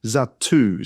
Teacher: I'm trying to emphasize the T, Zatu. So I say it with a bit more force with the double letter